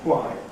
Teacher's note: it's often actually articulated as a single voiceless [ ʍ ], some friction probably at least with labial friction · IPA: ʍaɪ